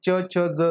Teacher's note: च छ ज जो याठिकाणी पहा दंततालव्य आहेत